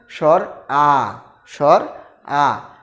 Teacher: সবগুলো বর্ণমালার মধ্যে স্বর আটাই সবচেয়ে বেশি মুখ খুলতে হয় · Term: নিম্ন স্বরধ্বনি